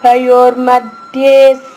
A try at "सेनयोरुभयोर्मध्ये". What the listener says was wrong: అక్కడ మీరు రా మింగేస్తున్నారు. రూ పూర్ణంగా పలకాలి. పూర్ణాక్షరం. అలా మళ్ళా మయో అంటున్నారు, ఏదో తేడా వస్తుంది.